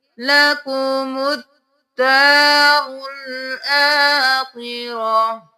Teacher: یہاں پر ہم میم کو دال کے ساتھ ملائیں گے، الف لام کو چھوڑ دیں گے، دال پر تشدید ہے، 2 بار ادا کریں گے